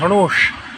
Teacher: सही होता है धनुष। आपकी जीभा पीछे जानी चाहिए।